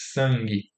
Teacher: quando é antes de uma dorsal, né, que é uma posterior, que é o K e o G, vira a velar, o N, né, de sangue.